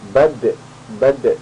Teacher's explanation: karena huruf da ini termasuk qalqalah atau huruf yang memantul, maka nanti akan ada mantulan di sini.